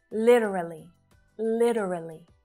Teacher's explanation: you'll hear literally with that flap t sound right it sounds more like a d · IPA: /'lit (ə) rə li/, /ˈlɪt(ə)rəli/